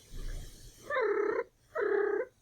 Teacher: you can hear two chirrups, one with a more level pitch and one with a more rising.